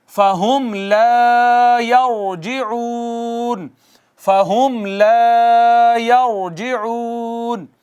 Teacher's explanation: ہم میں اگین میم ساکن ہے، اور میم ساکن کے بعد با میم نہیں ہے، تو کیا ہوگا؟ یہاں بھی اظہار شفوی ہوگا